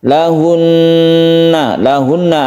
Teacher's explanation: lahunna lahunna ada Nun yang bertasydid kita sebut dengan ghunah musyaddadah dia dibacanya itu adalah dengung kita tahan ketika membaca tasydid Nun tersebut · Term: gunnah musyaddadah